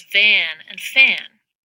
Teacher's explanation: each word begins with a labial dental fricative in Van the fricative his voice tannin fan its voiceless in